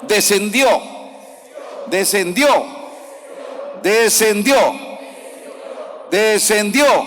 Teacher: en la última letra le lleva la fuerza